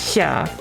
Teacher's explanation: it's more like you're trying to say S and sh at the same time